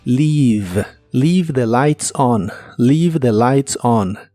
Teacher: Leave se pronuncia con la I larga o doble y termina con el sonido de la V o B chica, que es labiodental y vibrante en inglés.